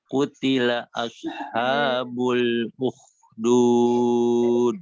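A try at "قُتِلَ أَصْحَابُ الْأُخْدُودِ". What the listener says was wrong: Nah, itu di kutilanya nggak ada tasydid, Kang. Jadi lurus. Kutila gitu ya. Kutila.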